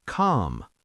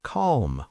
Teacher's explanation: British, calm. American, calm, with a slight L.